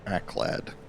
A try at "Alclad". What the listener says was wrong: Alclad? You don't pronounce the first L? There's definitely an L there.